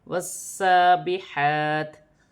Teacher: سین مشدد ہے اور کھڑی زبر بھی ہے، ایک الف کی مقدار کھینچ کے بھی پڑھا جائے گا، جماؤ کے ساتھ بھی پڑھا جائے گا